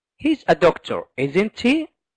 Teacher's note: rising intonation such as in he's a doctor isn't he so at the end it's rising it's going up it's going high